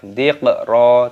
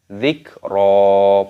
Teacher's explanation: Kafnya sukun dimatikan, jangan diqalqalah. Dziqra, tidak boleh.